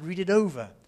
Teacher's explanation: that T is almost certainly going to be tapped